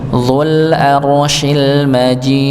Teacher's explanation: Syinnya masuk pada alif lam almajid. · Syinnya masuk ke lam dzul arsyil majid ya. Maka dipanjangkan ee huruf jimnya karena ada ya sukun bertemu dengan sukun pada huruf dal karena waqaf